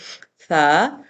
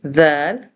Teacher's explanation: ان کو پڑھتے ہوئے ہوا کو روکنا ہوتا ہے، بڑی نرمی کے ساتھ جلدی سے پڑھنا ہوتا ہے بغیر سیٹی کے۔ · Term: سافٹ لیٹر